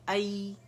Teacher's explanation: جب یہ سکون کے ساتھ ہوتا ہے, اس کے مخرج وسط اللسان پہ ہم جاتے ہیں